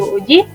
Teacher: terdiri dari alofon u tinggi atas bundar belakang dan u tinggi bawah bundar belakang